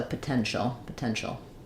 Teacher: we have stress on the middle syllable · T doesn't always say t when it's together with I at the end it can say the Sha sound · this T is part of the ti combination which makes the sh sound